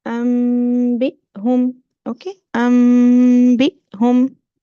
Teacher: Okay, you will say okay, with the gunna, and you will go to the makhraj of meme. Okay, and you need to show the gunna while you are pronouncing the letter meme and going to the ba